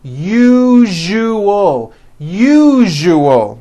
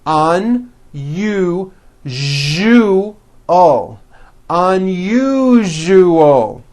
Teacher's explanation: second syllable the one with the underline needs to be voiced put your hand on your throat and feel for the vibration in the second syllable